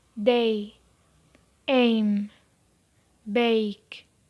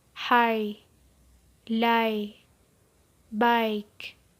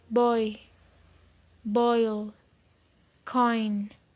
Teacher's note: They have the vowel sound I in pit or if as the finishing position. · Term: closing diphthongs